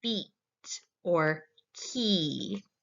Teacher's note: high vowels. And this is where the tongue is close to the roof of your mouth.